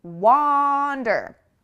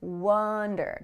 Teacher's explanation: You have to really open, and make that ah sound.